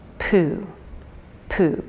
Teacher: notice when you say poo that the lips press together